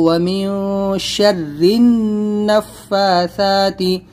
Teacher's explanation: یہاں پر بھی اخفا کریں گے، وَمِن شَرِّ النَّفَّاثَاتِ، یہاں پر اکثر لوگ کیا کرتے ہیں وَمِن شَرِّ نَفَّاثَاتِ، اس کو را نون زیر زن یہاں پر ہم ہجے کریں گے، تو را نون زیر زن، تشدید ہے نون کے اوپر، اور نون کے اوپر تشدید ہے تو غنہ بھی کریں گے